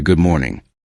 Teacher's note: A careful pronunciation may sound like good morning, but natural speech may sound closer to good morning. The final D may become very light because the mouth quickly moves toward the M sound.